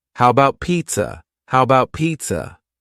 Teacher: The first A in the word about is gone. It's just missing. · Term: reduced